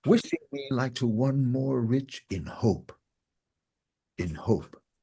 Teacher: emphasis to all the monoscopic words except for in and and hope falls on the end of the line which has a natural stress anyway